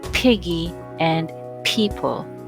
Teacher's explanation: as in piggy and people first thing you gotta do is press the lips slightly together then exert some effort as you blow them apart with a voiceless breath then finally pronounce the consonant loudly now what about the other